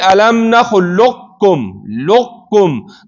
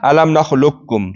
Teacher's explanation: تام هم جایز ده. تام په صورت کې به قاف مکمل مدغم شي، الم نخلقکم به وویل شي، مکمل د قاف اثر پکې ورک شي.